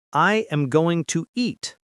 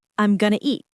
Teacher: the sounds connect going to becomes gonna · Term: connected speech